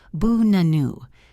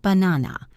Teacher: The first and last ah are schwas, bu-nanu, not banana.